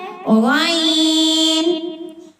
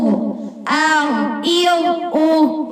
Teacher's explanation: یہ حلق کے اوپر والے حصے سے ادا ہوتا ہے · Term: ادنا حلق